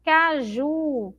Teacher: caju é a sílaba que eu demoro mais falando, é a sílaba forte